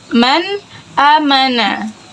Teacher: Jadi cara membacanya jelas, tidak didengungkan. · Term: izhar